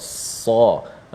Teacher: Nak mudahnya kita boleh rapatkan kedua gigi dan keluarlah angin ataupun sifat sad bila kita menekan hujung lidah itu, dan dia ada sifat yang tebal sa. Suara pangkal lidah kita terangkat bila menyebutnya dan menjadikan huruf itu dapat dibezakan dengan bunyi huruf sin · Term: huruf sad